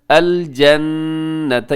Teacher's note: یہاں پہ نون مشدد ہے، یہاں پہ غنہ کیجیے گا۔